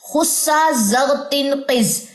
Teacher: ان کو ادا کرتے وقت زبان کی جو جڑ ہے وہ اوپر یعنی تالو کی طرف اٹھے گی، جس کی وجہ سے یہ حروف موٹے پڑے جاتے ہیں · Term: حروف مستعلیہ